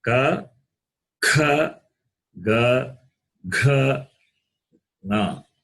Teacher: among the class consonants, the first class has throat. It has got throat as its place of pronunciation. Therefore, they are gutturals.